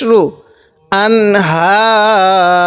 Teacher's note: আবার গুন্না করবো না কারণ নুন সাকিনের পরে এই ইজহারের হরফ অর্থাৎ স্পষ্ট করে পড়তে হয় এমন হরফ একটি হলো হা এজন্য এখানে গুন্না করবো না হাজার জবর হা পেশ রু আনহার